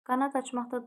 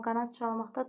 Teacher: Qanad açmaqda D qalır amma qanad çalmaqda D t- keçir.